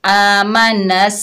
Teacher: सीन सख्ती और सीटी वाला हरूफ है